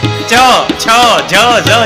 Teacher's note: તમારે ચ છ ઝ બોલવા હોય તો જીભ તાળવી અડાડવી જ પડે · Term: તાલુ